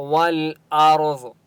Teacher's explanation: ضاد مستعلیہ میں سے، اس لیے ضاد کو موٹا پڑھیں گے.